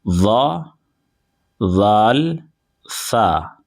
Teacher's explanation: زبان کا سرا اور اوپر کے دانتوں کے اندرونی کنارے سے ادا ہوتا ہے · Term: حروف لثویہ